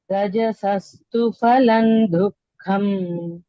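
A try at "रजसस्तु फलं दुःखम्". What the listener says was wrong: You can say pha, not fa. In Sanskrit, there's no fa. It's pha. Pha, pha. Mahaprana.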